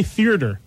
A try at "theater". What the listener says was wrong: No, you use 3 syllables. It should be 2.